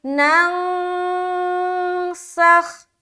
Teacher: نون ساکین، نون کی جو آواز ہے اسے چھپانا ہے اپنے ناک میں۔ یہ جو جب ہم چھپاتے ہیں گویا کہ ہم نے اخفا کا قاعدہ مکمل کیا۔